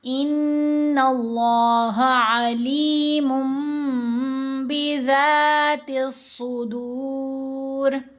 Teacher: नहीं, मीम को पढ़ते हुए होंठ तो बंद हो जाते हैं, मीम तब तक अदा नहीं होती जब तक दोनों होंठ नहीं मिलते